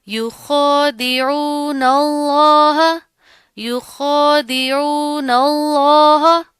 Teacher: لفظ اللہ سے پہلے زبر آ رہی ہے، تو اس کو موٹا پڑھیں گے، اس کو باریک نہیں پڑھیں گے